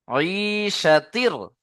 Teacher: তানবিনকে র এর সাথে মিলিয়ে বিনা গুণায় জাহির করে পড়তে হয়, একে ঈদগামে তাম বলে।